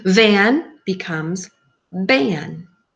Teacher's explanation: children instead of producing the continuous airflow they make it stop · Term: stopping